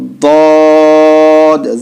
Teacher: تو ضاد آپ چاہے دائیں طرف لگائیں چاہے بائیں طرف لگائیں، ضاد اتنا موٹا نکلنا چاہیے، زواد نہیں ہونا چاہیے